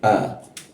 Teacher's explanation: Posisi huruf A itu ada di bagian bawah tenggorokan